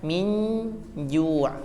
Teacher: antara bunyi nun ya dari hidung dan makharijul huruf jim dari tengah lidah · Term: ikhfa